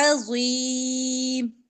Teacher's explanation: عین وسطے حلق سے اور ضا موٹا پڑا جائے گا